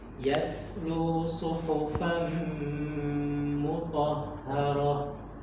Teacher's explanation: itu tak marbutoh ketika waqaf menjadi hak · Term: hak sukun